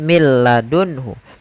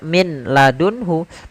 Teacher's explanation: Tidak dibaca min ladunhu, tapi langsung ke huruf lam. Karena nunnya dianggap tidak ada dan diidghamkan ke huruf lam. Maka mil ladunhu. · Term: idgham bila gunnah